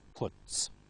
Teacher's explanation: t, voiceless, so followed by also voiceless s, puts. Let's practice some of these endings now, and maybe you can think as we do them whether they are voiced, unvoiced, or is.